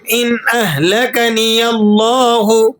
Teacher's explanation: لفظ اللہ کو آپ نے موٹا کر کے پر کر کے ادا کرنا ہے